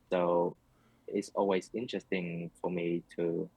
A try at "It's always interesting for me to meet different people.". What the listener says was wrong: It's always interesting for me to. Sentence stress is not quite there. It's always interesting for me to meet different people. It's always interesting for me to. Just to. A little bit of. You can hear the hesitation.